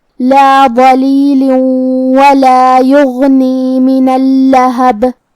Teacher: کلمت یغنی میں یہاں حرف الغین ہے، غین کو ہم حلق کے اوپر والی حصے سے ادا کریں گے۔ غین حروف تفخیم میں سے بھی ہے، تو ہم غین کو بھاری آواز میں پڑھیں گے، جو کہ اس پہ جزم ہے، لہذا ہمیں غین کو ظاہر کرنا ہے۔ · غین حروف تفخیم میں سے بھی ہے، تو ہم غین کو بھاری آواز میں پڑھیں گے، جو کہ اس پہ جزم ہے، لہذا ہمیں غین کو ظاہر کرنا ہے۔ کلمت اللہب میں یہاں لام کی تشدید کا دھیان رہے، 2 حرف کے برابر ہم حرف اللام کو پڑھیں گے۔ آخری میں با پہ روکیں گے تو اس پہ جزم سے روکیں گے، تو یہاں بھی با کا حکم ہوگا قلقلہ، ہمیں با کو ہلاتے ہوئے یہ کلمہ کو ادا کرنا ہے۔